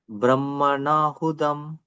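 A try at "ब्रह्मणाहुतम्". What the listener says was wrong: Tam, ta, ta. It is not da, ta. Brahmanahutam.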